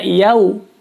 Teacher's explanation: Karena ini huruf ya, maka dibaca yau. Jadi au, ada u-nya ya, waw, suara wawunya. Bukan yao.